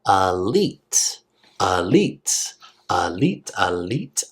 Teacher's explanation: that I actually sounds like a long e